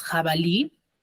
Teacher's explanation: tiene la mayor fuerza de voz en la última sílaba